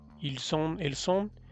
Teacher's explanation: se liga la S con el sonido de on, entonces sí se pronuncia ils sont o elles sont. Va a sonar parecido al ellos son o ellas son, ils sont, elles sont, parecido, pero de acuerdo a contexto vas a ir distinguiendo que no es exactamente lo mismo. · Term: liaison